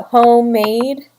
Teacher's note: spondee is also two syllables and that follows a stressed stressed pattern